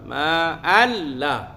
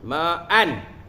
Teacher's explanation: Maknanya kita masukkan tanwin itu ke dalam lam tanpa dengung.